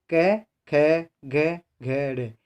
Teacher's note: इनका उच्चारण स्थान कंठ माना जाता है, यानी ये इनकी हवा कंठ के द्वारा बाधित होती है।